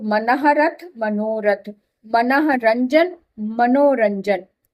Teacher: विसर्ग के साथ र मिलकर भी ओ बन जाता है विसर्ग का।